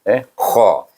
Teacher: Boleh, sebab nun sukun bertemu dengan huruf halqum, iaitu huruf kha, hujung halqum ataupun atas, belah atas sekali nak pergi ke mulut, kha. Jadi bacanya dengan izhar, sebab izhar halqi, sebab bertemu dengan huruf kha, huruf halqum.